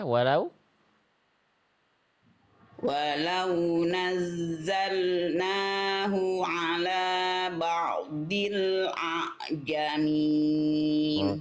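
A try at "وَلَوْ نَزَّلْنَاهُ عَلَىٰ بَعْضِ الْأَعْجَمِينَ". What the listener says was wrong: Oke, dodnya Bunda tinggal tebalkan ya. Huruf dod itu huruf tebal. Jadi lebih diangkat lagi pangkal lidahnya.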